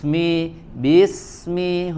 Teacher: dari suara huruf sinnya langsung bersambung ke Mi